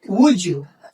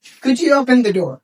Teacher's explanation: J is an intrusive sound. It doesn't exist here. It joined these sounds and the purpose is to maintain the fluency and the speed. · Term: intrusive J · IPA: /dʒ/